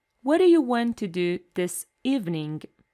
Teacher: the first do is a weak form and the second one is stressed